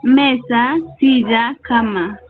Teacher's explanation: Tiene la mayor fuerza de voz en la penúltima sílaba y no debo de tildar la palabra si es que termina en N, S O vocal. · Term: Palabras graves